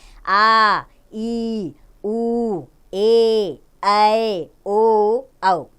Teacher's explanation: दुगना समय लगता है जिनके उच्चारण में उन्हें दीर्घ स्वर कहते हैं